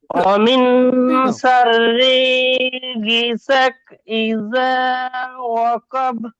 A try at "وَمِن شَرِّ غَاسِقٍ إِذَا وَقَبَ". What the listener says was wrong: গাসিকিন, গিসাক নয়, আমার সাথে বলেন।